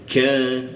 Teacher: lidahnya kita turunkan sehingga ada hembusan udara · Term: huruf ka